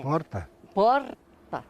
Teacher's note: aqui vivem descendentes de italianos e por aqui o r fica bem mais fraco